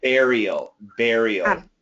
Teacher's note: the intonation is on the first syllable